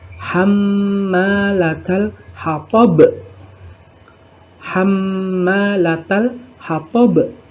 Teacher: Kemudian dibaca terang dan memantul. Bunyi pantulannya besar dan berada di akhir ayat. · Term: qalqalah kubro